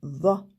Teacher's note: Alors que le va, on a le bout de la langue qui sort et on sent que la langue, elle est gonflée